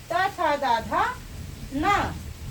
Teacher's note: तो ल त का मतलब हुआ त थ द धा न और दंता। इसका उच्चारण स्थान क्या है? दंत है